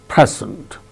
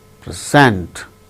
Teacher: When it is used as noun, it is present. When it is used as verb, present, second syllable gains stress.